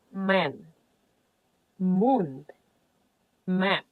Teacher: made by closing both lips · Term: bilabial